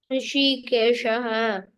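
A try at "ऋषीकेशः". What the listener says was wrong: So no, the first sh is the tongue has to touch the roof of the palate. Rishi. And then keshaha is normal. rishi. So she, that tongue is touching the roof. She. And like a whistle from the sides of the lip, the air should come out. Tongue is folded up. Rishi. Like a whistle. She. Touch the tongue to the roof of the palate when you say she.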